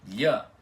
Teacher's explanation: o som lh em português é aquilo que se parece com o L normal e logo em seguida o I semivogal depois dele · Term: palatalização